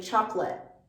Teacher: you'll often hear pronounced this T at the end of chocolate, a stopped T. So we don't fully pronounce the T sound. A native speaker won't often say chocolate.